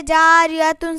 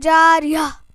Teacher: گول تا پر وقف کرنا ہو تو ہائے ساکنہ سے بدل دیتے ہیں، جیسے جاریتن سے جاریہ.